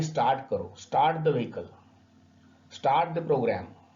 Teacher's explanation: जब भी आर के पहले किसी भी किस्म का वॉवेल आए और उसके बाद में कोई कॉन्सोनेंट आता है, तो आर को हम उच्चारण नहीं करेंगे